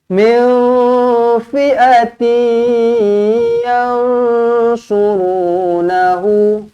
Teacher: Min fi'ati, jumpa dengan ya, nak kena buat apa? Nak kena dengungkan 2 harokat, jumpa dengan ya kena senyum.